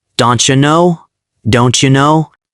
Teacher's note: When don't ends with T and you starts with J, they blend. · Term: blending pattern